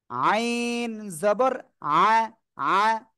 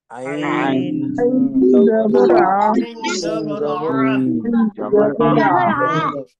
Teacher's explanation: সবাই একসাথে এটা একসাথে বলতে হবে, তার আগে আমি একটু বলি, এই আইন অক্ষরটা উচ্চারণের সময় কিন্তু গলাটা একটু চেপে পড়তে হয়।